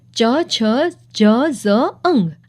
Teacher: આ 5 તાલવ્ય કહેવાય છે, કારણ કે આનો ઉચ્ચાર કરતી વખતે જીભ તાળવે લાગે છે.